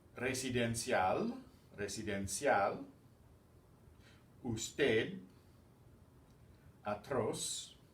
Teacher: the stress is going to be on the last syllable